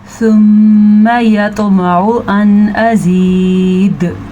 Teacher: सुम्मा मीम के ऊपर शद है तो गुन्ना ज़रूर करना है